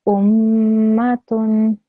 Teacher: if the meme is a mushaddad, then that means when you join it with the previous letter, you should hear a ghunna sound